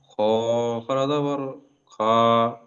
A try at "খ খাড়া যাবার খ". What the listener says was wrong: খ খাড়া যাবার খা হবে না, খ খাড়া যাবার খ হবে, ওটা পুরো অক্ষর উচ্চারণ করার সময় মুখ গোল হয়ে যাবে। খ, খ খাড়া যাবার খ।